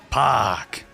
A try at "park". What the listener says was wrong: No, as in emphasis on the R. Park.